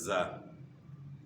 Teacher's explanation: زا میں زبان کا تعلق جو ہے نچلے دانتوں کے ساتھ ہے اور کچھ معمولی اوپر کے دو دانتوں کے ساتھ بھی ہے، اور اس میں صفت صفیر بھی ادا کرنی ہے